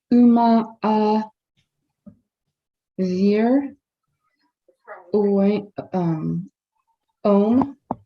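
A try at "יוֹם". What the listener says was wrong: You need to say the yud. Start with the yah sound.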